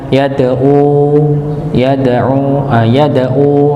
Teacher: Yad'u, huruf dal sekali lagi, huruf yang punya sifat qalqalah, dipantulkan ketika dalam keadaan sukun, maka dipantulkan yad'u, yad'u nggih, hurufnya dipantulkan. Berikutnya huruf ain sekali lagi jangan sampai dibaca seperti hamzah